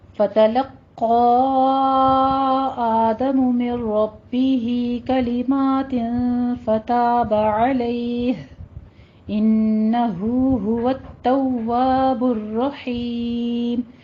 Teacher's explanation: لقا میں قوف کو پر پڑھنا ہے, تشدید بھی ادا کرنی ہے, سختی سے رک کے آگے مد منفصل جائز کرنی ہے, 4 کاؤنٹ کرنا ہے. مر ربی میں ادغام بلا غنہ کرنا ہے, من کی آواز نہیں آنی چاہیے. مر ربی میں را پر پڑھنا ہے, ہی میں مد صلہ صغرا ہے ہماری, 2 کاؤنٹ کرنا ہے.